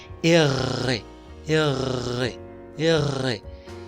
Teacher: la r en el francés suena como la g pero con una vibración en la garganta es decir rr por ejemplo digo rogarte si la r suena